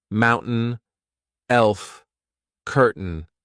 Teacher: This is when I'm replacing T with the glottal stop.